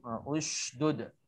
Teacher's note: Ada sebahagian kita shin tak ada sifat tafashi tadi. Sifat tersembunyinya hawa ataupun angin waktu menyebutnya huruf shin. Jadi mulut kita pun nak kena ke depan untuk nak sifatkan tafashi tadi ushdud.